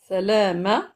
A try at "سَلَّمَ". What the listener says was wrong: appuyer الشدة. Ne prolonge pas. سلم.